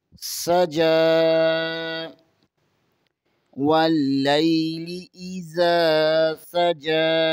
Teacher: سین حروف صفریہ میں سے ہے، یہاں پر سیٹی کی آواز آنی چاہیے